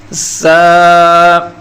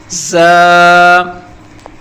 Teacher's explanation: دانتوں کو آپس میں ملا کر سیٹی کی سخت آواز نکالنی ہے، جیسے مکھی کی بھن بھناٹ ہوتی ہے۔